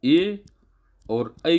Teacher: ए और ऐ का जो उच्चारण स्थान है कंठ तालव्य है